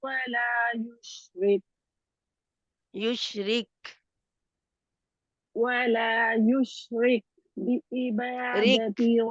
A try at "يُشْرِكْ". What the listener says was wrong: آپ کا کاف کی ہمس نہیں ہو رہا یشرک